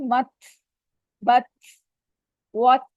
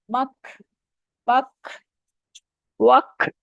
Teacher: اب ہوا ہمارے منہ سے جاری رہ رہی ہے، ت ختم ہو گیا، آواز ختم ہو گیا، لیکن ہوا چل رہی ہے۔ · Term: ہمس